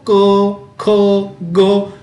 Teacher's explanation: क बोल के देखो, क, ख, ग, हमारे कंठ में इसे आवाज आ रही है, इसलिए उसे हम क्या कहेंगे? कंठ वर्ण कहेंगे।